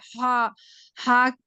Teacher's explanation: ہا حلق کے بیچ کے حصے سے ہا ادا ہوتا ہے۔ ہا اور عین کا سیم مخرج ہے۔